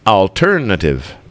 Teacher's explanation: The stress is on ter, so alternative.